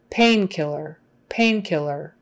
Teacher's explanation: emphasis on the first syllable painkiller is when you say it all together it's on the pain